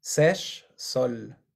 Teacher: cuando tenemos la s al principio no suena como z